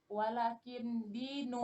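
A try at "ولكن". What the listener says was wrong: Walakin lamnya dipanjangkan, Bu. Walakin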